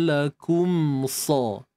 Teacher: mim mati jumpa dengan sa di sini, berlakunya izhar syafawi